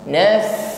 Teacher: Kadzalika naf, huruf fa sukun dia juga memiliki sifat hamas, jadi ada nafas yang mengalir ketika mengucapkannya ya. Pertemukan ujung gigi dengan bibir bawah ya, makhraj huruf fa, sifat yang menyertainya hamas.